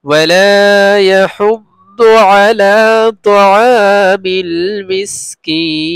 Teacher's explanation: ওয়ালা এক আলিফ লম্বা হবে · ইয়াহুদ্দু আলা এক আলিফ লম্বা হবে, তাআ এক আলিফ লম্বা হবে, মিসকিন এক আলিফ দুই আলিফ তিন আলিফ, যে কোনো একটা আপনি করতে পারেন